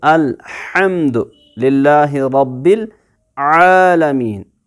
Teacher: आइन centre of द throat से pronounce होगा।